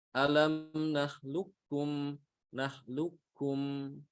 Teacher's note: Yang pertama adalah dibaca idgham secara lengkap, ya. Jadi qaf itu benar-benar dimasukkan ke kaf secara sempurna. Ya, seakan-akan qafnya itu hilang. Yang ada adalah kaf.